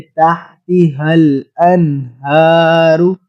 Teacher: اس کو بھی بھاری آواز میں پڑھتے ہیں، ادھر بھی گول آنکھوں والی ہا کو بھاری آواز میں پڑھیں گے